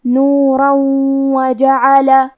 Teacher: ہم یہ تنوین کو واو میں ملا کے غنہ اور تشدید کے ساتھ یہ حکم کو ادا کریں گے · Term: ادغام